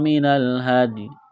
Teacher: نون ساکن کے بعد حروف حلقی میں سے حمزہ ہے تو نون ساکن پر غنہ نہیں کریں گے، آواز ناک میں نہیں چھپائیں گے